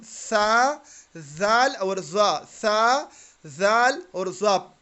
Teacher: टंग tip behind अपर teeth, यानी ज़बान की नोक को सनाया उलिया की नोकों के साथ, सनाया उलिया कौन सी दो दांत हैं, बिल्कुल सामने वाले दो दांत, उनके सिरों के साथ ज़बान की नोक लगाएं तो हम सा, जाल और ज़ा, सा, जाल और ज़ा पढ़ सकते हैं, ठीक है।